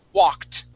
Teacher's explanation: it has an ed ending that Ed sounds like a t